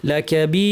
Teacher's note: আমরা দুই আলিফ করে থামলাম এখানে কাফ এসেছে ইফা করতে হবে জিব্বাকে কাফের মাখরাজে লাগিয়ে নাক থেকে গুনা